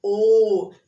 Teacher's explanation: कंठ भी बोला और ओष्ठ भी बोला, ओ, तो ओष्ठ भी आ रहा है, कंठ भी आ रहा है, तो कंठ और ओष्ठ दोनों आए तो ओ भी आप उच्चारण करके देखिए बोल के।